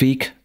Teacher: am Ende von Silben haben wir keine stimmhaften Obstruenten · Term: Endranddesonorisierung